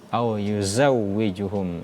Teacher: Za di situ salah satu sifat za yaitu sofir ya, huruf sa, za dan so. Ketika menyebutkan huruf za itu seolah-olah ada siulan burung ya, berdesis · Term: shofir